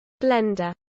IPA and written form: ˈblɛndə (blender)